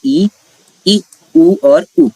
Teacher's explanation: जैसे आपने कहा ई, ऊ और ऊ, इसमें आपकी जो जीभ है वो क्या कर रही है, वो अपनी सर्वाधिक ऊंचाई पर है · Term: समृद्ध स्वर